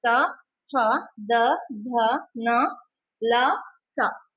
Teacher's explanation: ಹಲ್ಲಿನ ಸಹಾಯದಿಂದ ಉತ್ಪತ್ತಿಯಾಗುವಂತಹ ಅಕ್ಷರಗಳಿಗೆ ದಂತ್ಯ ಅಕ್ಷರಗಳು ಅಂತ ಕರೀತೀವಿ